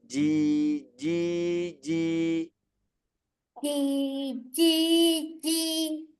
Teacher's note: Tengah lidahnya betul-betul harus menempel di langit-langit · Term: huruf j